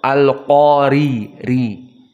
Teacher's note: maka ra al-qari dalam keadaan muraqqaqah karena dia kasrah, al-qari ri, tidak mufakhamah.